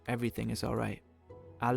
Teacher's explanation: languages the words of a sentence are spoken in a flow in German sometimes there's a mini pause before each individual word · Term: glottal stops